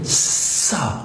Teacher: اس کو نرم رکھنا ہے اور یہ سیٹی کی آواز کے بغیر ادا نہیں ہوگا